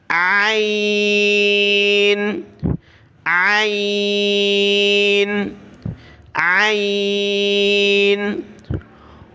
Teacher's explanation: جس طرح ہا کو گلے سے نکالا جاتا ہے اسی طریقے سے عین کو بھی گلے سے نکالنا ہے، صاف طریقے سے ادا کرنا ہے۔